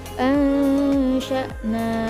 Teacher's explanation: nun mati bertemu dengan shin, termasuk hukum bacaan ikhfa hakiki, cara membacanya dengan disamarkan